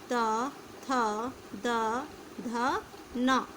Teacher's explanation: दंत, ये हमारे दांत से बोलते हैं ता वर्ग,